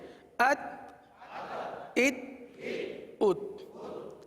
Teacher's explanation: حرف تا میں قلقلہ نہیں ہوگا. آواز کو جما کر پڑھیں.